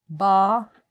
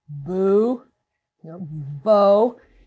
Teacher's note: they're all the same in that it begins with closure at the lips